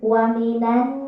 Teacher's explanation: ada nun bertasydid atau bersyiddah. Ini adalah hukum bacaannya gunnah. Jadi wa minan diketuk 3 ketukan, ya.